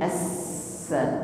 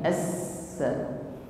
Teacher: Tafassa, angin mengalir serta diiringi dengan shafir. Jadi yang buat huruf sin ini bunyi desis itu adalah sifat shafirnya